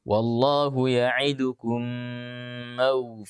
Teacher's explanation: dibaca dengan panjang 2 harakat tidak boleh tergesa-gesa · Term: Idgham Mimi